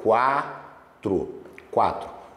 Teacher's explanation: Porque a palavra quatro, ó, quatro, quatro, o U é uma semivogal e o A é uma vogal. Então aqui na palavra quatro, a gente tem um ditongo crescente.